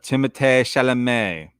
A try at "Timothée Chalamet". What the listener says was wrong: I don't think it's really Timothée. I think if you pronounce it in French, maybe it is, but he just says Timothy.